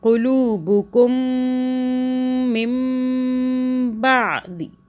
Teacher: ساکن میم کا قاعدہ یہ ہے کہ جب اس کے بعد با آتا ہے تو میم کو ہم 2 سیکنڈ کے لیے یہاں پر غنہ کریں گے، ٹھیک ہے۔ دونوں میم مشدد پہ بھی اور میم ساکن پہ بھی، کیونکہ اس والے میم ساکن کے بعد با آ رہا ہے۔